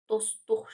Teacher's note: Dostluq sözünə yenə s-tıdan sonra samit gəldiyi üçün t düşəcəkdir. Dostluq şəklində olacaqdır. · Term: səs düşümü